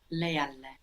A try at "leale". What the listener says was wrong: Leale, good.